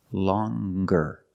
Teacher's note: longer with a nasal sound plus the hard G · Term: hard G sound